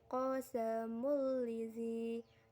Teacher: tanwin bertemu huruf lam tasydid dibaca lebur tanpa dengung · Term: idgham bila gunah